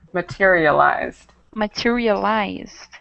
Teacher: we have the Ed at the end but make sure you don't add the extra syllable